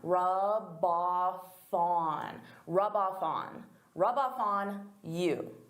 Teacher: So here I'm taking the f from off and I'm adding it to on.